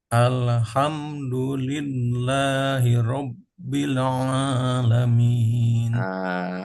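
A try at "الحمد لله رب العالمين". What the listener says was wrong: Haknya sudah bagus, tapi salahnya di lam terpental. Lam yang kedua juga terpental. Enggak. Alhamdu. Rabbil caranya adalah harus ditahan satu harokat, satu ketukan. Tidak boleh lebih, tidak boleh kurang. Alhamdulillahi rabbil, tahan satu harokat. Rabbil alamin. Kalau nggak ditahan, maka langsung terpental.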